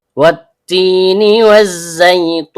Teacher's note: Kemudian ta ujung lidah bertemu dengan pangkal gigi seri atas. Karena taknya berharokat kasroh diikuti ya sukun yang keluar dari tengah lidah naik memantul ke langit-langit, maka terjadi hukum bacaan mad tabi'i, panjang dua harokat dan setiap panjang keluar dari rongga mulut.